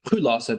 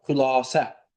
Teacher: Modal söz olsa bax xülasə deyirəm və uzanma olmur. Amma ki isim olsa xülasə. Burda artıq uzanma fərqi olur. Yəni bu tələffüz forması yalnız modal sözün tələffüzüdür.